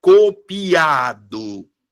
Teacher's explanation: Aqui no caso, ó, a vogal mais forte é o A. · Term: sílaba tônica